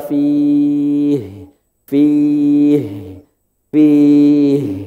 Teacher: dianjurkan ketika berhenti benar-benar endingnya di tenggorokan bawah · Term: H besar